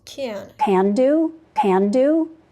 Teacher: the prenasal A raising in can. She doesn't say can, she say can, because this is a nasal sound.